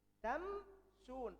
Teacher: Nggak mungkin. Makanya jadikan izhar, dijelaskan mimnya dibentuk huruf sin baru.